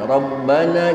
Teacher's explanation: tasdid yang ada di atas huruf ba cuma penekanan saja tapi tidak ditahan